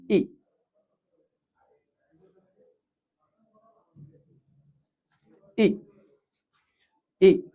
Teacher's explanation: Lips slightly spread, nearly closed, high front relaxed, and sound should be short and steady.